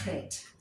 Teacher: That is a guttural letter, and it sounds in the throat, in the back of your throat.